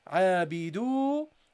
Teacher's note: the dal with the dhamma prolonged by the waw. Again, a long vowel